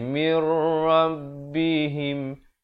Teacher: Di sini nun mati bertemu ra, hukumnya idgham bila gunnah. Masuk tanpa dengung di sini ya. Asalnya min rabbihim jadi mir rabbihim, him bukan him ya.